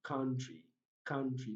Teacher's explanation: central vowel sound and the word is pronounced as country country